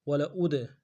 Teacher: حمزہ کو دال کے ساتھ ملانا ہے، دال حروف قلقلہ سے قلقلہ کریں گے